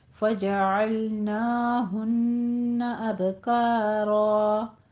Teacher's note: اب میں قلقلہ کرنا ہے، نون مشدد ہے پیچھے، اس پر غنہ واجبہ کرنا ہے